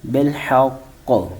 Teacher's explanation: کا کو کچھ نہیں پڑھا بلکہ کو کہہ کے چھوڑ دیا، قاف کی آواز نکالی لیکن حرکت ظاہر نہیں کی